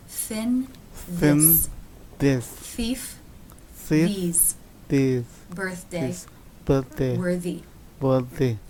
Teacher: the soft palate is raised for this sound you can see the tongue through the teeth just the tip comes through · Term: th consonant sound